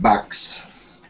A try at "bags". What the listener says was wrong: Backs. Actually, no. Back, as in B-A-C-K. B-A-G. Bags.